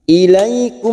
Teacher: Ilaikum mim sukun bertemu waw, idhar safawi dibaca jelas tanpa mendengung, mim sukun dibaca jelas